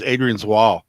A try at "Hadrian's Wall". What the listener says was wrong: Adrian's Wall. Hadrian. Hadrian. You said Adrian. hear the H. Silent H.